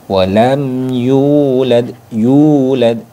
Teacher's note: cara bacanya yaitu dibaca panjang satu Alif atau satu ayunan atau dua harakat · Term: mad thabii